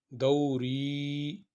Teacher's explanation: یہ دیکھیں دو ہے، اس کو ہم 2 حرکت کے برابر نہیں پڑھیں گے بلکہ ایک ہی حرکت کے برابر نرمی کے ساتھ ادا کریں گے، لیکن یہ جو ری ہے اس کو 2 حرکت کے برابر پڑھیں گے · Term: حروف مدہ